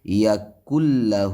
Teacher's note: یا کلہ میں ادغام ہو رہا ہے، لیکن یہ ادغام جو ہے یہ ادغام بلا غنہ ہے، یعنی نون ساکن کے بعد اگر را اور لام آ جائے تو وہاں جو ادغام ہوگا وہ ادغام بلا غنہ ہوگا، بغیر غنے کے ساتھ ادغام ہوگا، یعنی اس نون کی آواز ناک سے ادا نہیں ہوگی. یا کلہ ہا کے اوپر الٹا پیش ہے اور یہ ایک الف کے برابر کھینچنا ہوتا ہے.